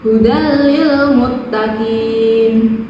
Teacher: Yang ketiga, ada hukum bacaan idgham bila guna, yaitu huruf tanwin bertemu dengan huruf lam. Cara membacanya dimasukkan dengan tidak mendengung.